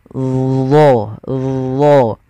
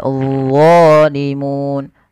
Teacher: Lidahnya untuk menyempurnakan, dia mirip dengan zal, tapi pangkal lidahnya terangkat, dan dia punya sifat namanya idbaq, melekat ke langit-langit lidah kita.